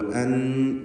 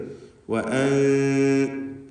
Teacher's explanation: നൂനിൻ്റെ മഖ്റജിൽ നാവ് സ്പർശിക്കുന്നതിന് പകരം അല്പം നാവിനെ അകറ്റി വെച്ചുകൊണ്ട് ഉച്ചരിക്കുന്ന രീതി, അതാണ് കൈഫിയത്തുൽ ഇഖ്ഫാ.